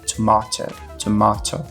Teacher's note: no inglês britânico a gente tem esse a um pouco mais grave